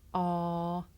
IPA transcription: ɑː